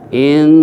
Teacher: lamnya lam jalalah tebal